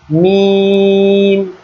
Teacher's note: ঠোঁট থেকে 4টা হরফ, তো ঠোঁটের এক এক জায়গা থেকে এক একটা হরফ উচ্চারিত হয়। তো মিম হরফটা উচ্চারিত হয় ঠোঁটের বাহির ভাগ যুক্ত করে, অর্থাৎ ঠোঁটের 2টা অংশ। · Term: ঠোঁটের মাখরাজ